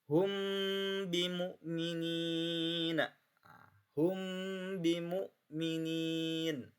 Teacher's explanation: Suka ada Bapak kadang mendengar hum bimu'minin, gak ditahan, terus gak ada dengungnya, maka itu tidak sah ya secara kaidah tajwid. Jadi harus ditahan hum bimu'minin. mimnya ditahan samar ya. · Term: ikhfa syafawi